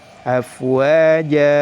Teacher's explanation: mad iwad itu hanya 2 harokat saja, tidak boleh terlalu panjang